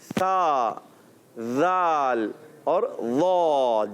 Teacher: زبان کا سرا اور اوپر کے دانتوں کے کناروں سے سا، ذال اور ضا، یہ 3 حروف ادا کریں گے۔